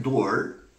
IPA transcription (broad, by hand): dɔː(r)